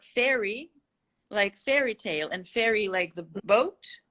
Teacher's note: they're homophones too in american english